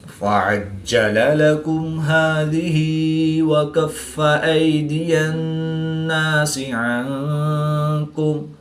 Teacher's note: نون مشدد میں ہمیشہ غنہ ہوتا ہے، تو یہاں پر ہم غنہ آنی کر کے پڑھیں گے